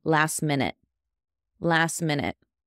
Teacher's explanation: we're going to drop that T